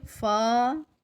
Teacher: فا ایک الف کے جتنا لمبا کریں گے اس کو